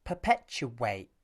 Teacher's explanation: you'll notice a w sound between the third and fourth syllables · This w sound is caused by the squeezing of the lips at the end of the oo vowel. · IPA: /w/